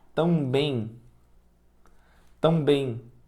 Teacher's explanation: o som que sai da nossa boca também, aquele M ali, ele se transforma num I. Então, por isso que é considerado um dígrafo. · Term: ditongo